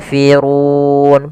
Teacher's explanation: 'ru' di sini memiliki 'ro' yang tebal, yaitu ro tafkhim. Huruf R dibaca dengan tebal. Kemudian dalam kata ' run', ada pembacaan lissukan yang gila dan kering . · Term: ra tafkhim